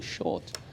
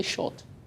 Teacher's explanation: The word short, actually, the R is like a vowel, so it elongates the O